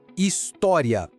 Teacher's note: A sílaba tônica é tó, a penúltima. A palavra termina em ia, que é um ditongo crescente.